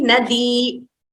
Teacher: you could prolong the Ikaranta slightly, Nadi, like to know that, to stress that it is a Dirgha, slightly more.